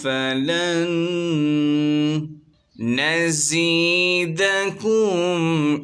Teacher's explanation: نون ساکن کے بعد نون آ رہا ہے، ادغام کا قاعدہ ہوگا، یہاں پر غنہ کریں گے، ایک الف کی مقدار اس سے کھینچیں گے۔